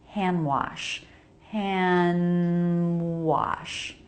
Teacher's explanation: This is a case where you can drop the D. It's not uncommon to drop the D between two other consonants. And I think it sounds just fine to say hand wash, hand wash.